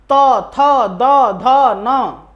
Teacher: है तो वर्ग तथा धन आप इनको उच्चारण करेंगे तो देखेंगे आपका जीव जो है दांत में टच हो रहा है और दांत से टच हो करके वायु बाहर निकल रही है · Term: दंत्य